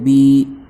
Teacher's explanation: بایا زیر بی، یا ساکن سے پہلے با کے نیچے زیر ہے اس لیے یا مدہ ہوگا، یا مدہ کو ایک الف کے برابر کھینچ کر پڑھیں گے